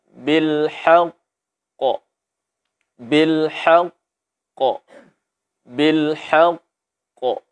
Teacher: Huruf qaf atau huruf qalqalah yang bertasdid mesti dijedahkan suaranya. Ada jedah antara huruf sukun dan huruf yang kedua. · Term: qalqalah akbar